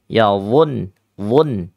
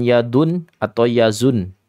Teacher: Isti'la, itbaq ya. Tafkhim jelas, menempel ya, dia lengket ke langit-langit mulut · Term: dha